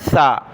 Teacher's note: زبان کی نوک دانتوں سے باہر نکالنی ہے اور سیٹی کی آواز کے بغیر یہ حرف ادا کرنا ہے